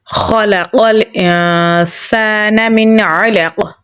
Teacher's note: عین کو گلے کے درمیان والے حصے سے نکالیں گے۔ قاف کو ہم موٹا پڑھیں گے اور قلقلہ کریں گے